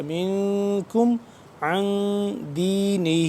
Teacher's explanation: نون ساکن ہے نون ساکن یہاں پہ بھی ہے یہ دونوں جگہ پہ اخفا ہو رہا ہے